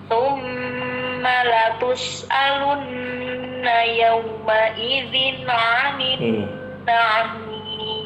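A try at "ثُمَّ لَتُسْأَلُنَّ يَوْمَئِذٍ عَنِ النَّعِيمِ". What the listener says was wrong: Nah, mohon maaf ketika membaca yauma idzin 'anin, di sini tanwinnya jangan diqalqalah. Tsumma latus'alunna yawma idzin 'anin na'im.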